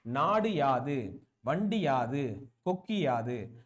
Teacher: அப்ப யாது அப்படின்ற ஒரு சொல்லோட ஒரு டு, ஓகே, டு கு ஒரு குசுடு துபுரு இருக்கக்கூடிய குற்றிய லுகரம் சேர்றப்ப புரியுதுங்களா, யாதுக்கு முன்னாடி ஒரு குற்றிய லுகரம் இருந்துச்சுன்னா அது இகரமா மாறுது